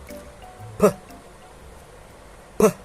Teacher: So you contain the air first, and then you release it with your mouth, with your lips.